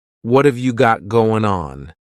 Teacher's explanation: Instead, you're going to hear a reduction or a contraction of the first two words, just like we saw with the previous example. What and have are going to be pushed together.